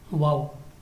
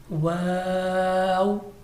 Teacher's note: واو جو دونوں ہونٹوں کی گلائی سے ادا ہوتا ہے اور اس کو بھی ہم تھوڑا سا کھینچ کر اور ہونٹوں کو گول کر کے پڑھیں گے.